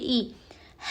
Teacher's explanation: حمزہ حلق کے نیچے والے حصے سے ادا ہوتا ہے